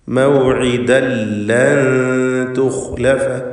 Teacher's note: സക്കിനത്തായ നൂനും ശേഷം താവും ഇഖ്ഫ ഹഖീഖി നൽകി മറച്ചു മണിക്കുക. ലൻ തുഖ്ലഫ, ഖാഇന് തഫ്ഖീം കൊടുക്കണം. · തൻവീനിനെ ശേഷമുള്ള ലാമിൽ പൂർണ്ണമായും ലയിപ്പിച്ച് മണിക്കാതെ ഉച്ചരിക്കുക. ഇദ്ഗാം ബിഗൈരി ഗുന്ന.